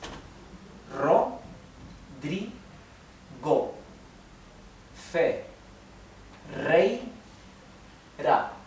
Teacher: It remains forward and slightly touching the front of your upper palate, okay? And it's a sound of the vibration of the tongue near your front teeth, okay? The upper front teeth. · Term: Spanish R